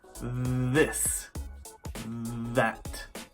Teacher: This TH sound is voiced and can be made by sticking your tongue between your teeth.